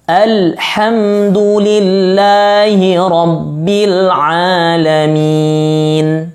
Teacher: huruf H adalah huruf tenggorokan yang keluar dari tenggorokan